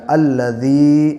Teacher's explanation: یا ساکن سے پہلے ذال کے نیچے زیر ہے، اس لیے یا مدہ ہوگا اور اسے تھوڑا کھینچ کے پڑھیں گے